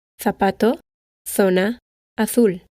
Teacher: With the exception of most of Spain, where the theta is used and is pronounced th, similar to the th in think and thank you